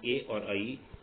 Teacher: अ और ई को मिलकर के ए बना, ये अपन पहले दिन पढ़ चुके हैं। आ का उच्चारण स्थान कंठ है, ई का उच्चारण स्थान तालु है, इसलिए अ और ई को मिलकर के बना ए और आई, इन दोनों का उच्चारण स्थान कंठ और तालु है।